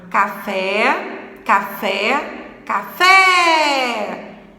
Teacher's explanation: Café, café, café. Então, o fé é a sílaba tônica da palavra. É a sílaba mais forte. Então, ela é classificada como oxítona.